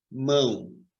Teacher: esse M que tem som de U, esse M é uma semivogal